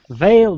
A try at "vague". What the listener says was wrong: No, but it sounds very close to it. The last syllable actually is a different one. Actually, it's only one syllable. The last sound. So vague.